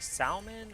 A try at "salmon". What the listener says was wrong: Salmon. L is silent. Must that be a Newfie thing, and it's actually not silent? pronounced salmon. Without the I, yes. Or L, sorry, not I.